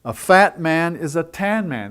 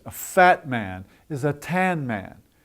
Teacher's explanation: you would emphasize the descriptive adjectives